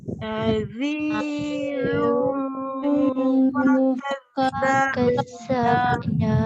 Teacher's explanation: Baris kedua tanwin itu yang masuk ke hidung, yang didengungkan tu, masuk hidung.